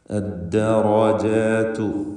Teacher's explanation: ഈ പദത്തിൽ റായിന് മാത്രം തഫ്ഖീം വരുന്നു, മറ്റക്ഷരങ്ങൾക്കൊന്നും തഫ്ഖീം വരുന്നില്ല, എല്ലാറ്റിനും തർക്കീഖാണ് എന്നതും പ്രത്യേകം ശ്രദ്ധിക്കുക.